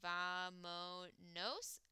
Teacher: for nosotros is vamos but since we take off the S it becomes vamonos with an accent on the second-to-last vowel